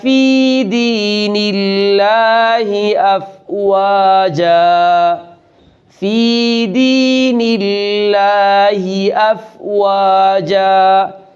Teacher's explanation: اللہ کے لام کو موٹا ادا نہیں کریں گے، اس لیے کہ اس سے پہلے زیر ہے